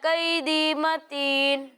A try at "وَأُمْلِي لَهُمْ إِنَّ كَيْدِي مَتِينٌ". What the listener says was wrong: ٹھیک ہے، اچھا پڑھا، لیکن آپ نے وَأُمْلِي لَهُم میں تھوڑا سا غنہ کیا، ٹھیک ہے، تو آپ نے ایسا نہیں کرنا۔ میم ساکن کے بعد لام آ رہا ہے، یہاں اظہار شفوی ہے، یہاں غنہ نہیں کریں گے۔ کوئی اور سنائے گا؟